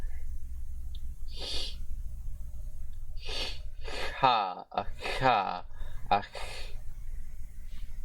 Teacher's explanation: this is the voiceless palatal fricative consonant, non-sibilant fricative consonant